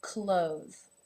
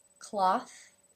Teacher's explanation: the th is now voiced however it also changes the vowel sound the vowel is now the Oh as in no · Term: voiced th